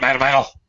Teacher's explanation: my D's and my T's, when they're surrounded by two vowel sounds, sound exactly like D's